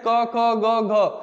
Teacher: जिन वर्णों का उच्चारण करते समय जीभ का पिछला हिस्सा हमारे कंठ को छूता है उन्हें हम लोग कंठ व्यंजन कहते हैं।